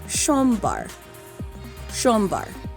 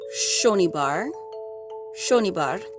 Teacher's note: in Bengali, the S's are pronounced sh